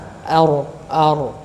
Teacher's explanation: dia bergetar dua kali kemudian ditarik ke belakang · Jadi e posisi lidahnya itu ya bergetar ya bergetar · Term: huruf ro